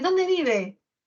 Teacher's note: Las oraciones interrogativas parciales o también llamadas pronominales también van a tener entonación descendente.